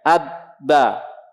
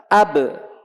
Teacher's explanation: Terasa bagi kita kedua bibir dalam keadaan tertutup dengan lunak.